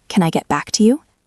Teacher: The stress is usually on back.